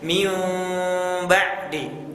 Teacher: sebagian ulama ada yang sedikit dibuka celahnya, tidak benar-benar ditutup kedua bibirnya. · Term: iqlab